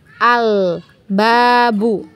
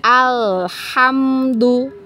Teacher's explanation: alif lam bertemu dengan huruf ba ya maka lamnya ini kita baca jelas ya Al gitu ya Al babu ya kemudian ada huruf H